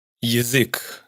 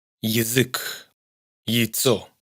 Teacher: Es como una I breve precedida de una clarísima semiconsonante Y.